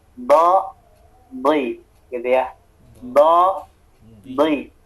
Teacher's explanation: tepi lidahnya disentuhkan ke gigi geraham, kemudian tebelin suaranya